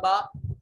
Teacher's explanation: جب حرکت نہیں پڑھیں گے تو یہ ساکن ہوگا با, اور با کے اوپر قلقلہ واجب ہوگا